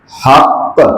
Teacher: جب زبان جدا ہو رہی ہے تو آپ کی یہ آواز پیدا ہو رہی ہے، اسی کو قلقلہ کہتے ہیں۔